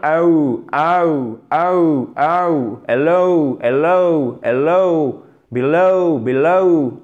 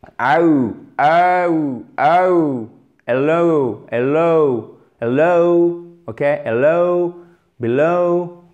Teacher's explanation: le double son pour below et pour hello, c'est un E qui est le premier son, donc qui est le son dominant, puisque dans une diphtongue, vous avez toujours un premier son dominant et un deuxième son qu'on entend un peu moins.